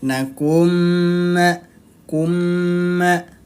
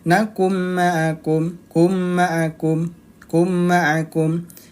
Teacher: Nah, jadi harus ditahan 2 ketukan. Idgham bi gunnah dibacanya dia ditahan 2 ketukan.